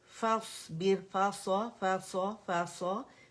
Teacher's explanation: فا باریک ہے صاد موٹا ہے